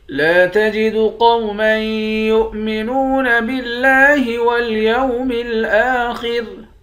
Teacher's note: لام کے بعد الف ہے، الف حروف مدہ ہے، ایک الف کے برابر کھینچ کر پڑھتے ہیں۔ قاف کو موٹا پڑھیں گے، میم کو یا کے ساتھ ملا کر ادغام مع الغنہ کر دیں گے، یعنی میم کو یا کے ساتھ ملا کر غنہ کے ساتھ پڑھیں گے، یا کو حمزے کے ساتھ ملا کر پڑھیں گے، واو کے ساتھ ملا کر نہیں پڑھیں گے۔